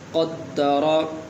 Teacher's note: اسی طرح یہاں پر قاف ہے تو قاف اور کاف کے درمیان فرق کرنا ہے۔ قاف کا مخرج الگ ہے اور کاف کا مخرج الگ ہے، اور اس قاف کو جو ہے پر کر کے پڑھا جاتا ہے۔